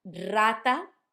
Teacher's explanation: Rata sounds like a rolled R, a strong one, because it's at the start of the letter, of the word.